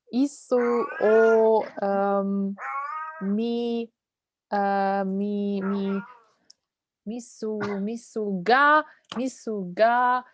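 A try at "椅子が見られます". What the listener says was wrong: Not misu. It's not misu. It's isu. Miraremasu. Isu ga miraremasu.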